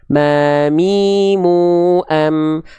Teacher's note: Mim persis dilafalkan sebagaimana kita melafalkan huruf M pada abjad alfabet, dengan cara menyentuhkan kedua bibir atas dan bibir bawah kita. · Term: huruf mim